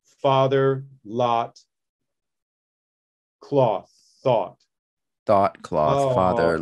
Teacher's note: a little bit of rounding on cloth and thought